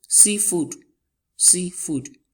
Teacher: The first noun there, the first word there, carries the stress, which is sea.